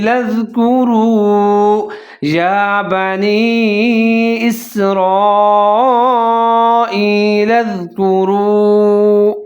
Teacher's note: کرو، کاف کے اوپر پیش ہے، را کے اوپر پیش ہے، واو ساکن ہے تو را اور واو ملا کے پڑھیں گے، اور تھوڑا سا لمبا کر کے پڑھیں گے، ہونٹ گول کریں گے